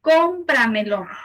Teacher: Su sílaba tónica es la cuarta, de atrás hacia adelante. Es una palabra sobre esdrújula.